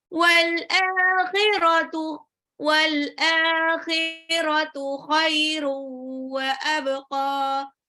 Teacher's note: Wal akhiratu, alifnya matabi'i 2 harokat, khairu, tanwinnya itu ketemu sama waw, jadi idgham bi gunah, khairu wa abqa, baknya sukun, jadinya qalqalah, qafnya 2 harokat.